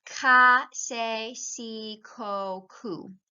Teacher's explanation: So the hard sound is a K and the soft sound is the S or th in Spain.